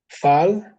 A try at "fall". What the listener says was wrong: Are you sure? The A pronounced as O. A fall. Okay, it's O.